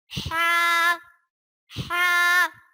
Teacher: ہا حلق کے درمیان والے حصے سے ادا ہوتا ہے